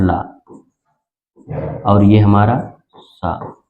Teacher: इन सभी का उच्चारण स्थान किससे होता है? दंत से। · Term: दंत ध्वनि